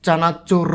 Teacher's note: চানাচুর শব্দে র আছে, এই র হচ্ছে কম্পিত ব্যঞ্জন ধ্বনি